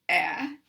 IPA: ε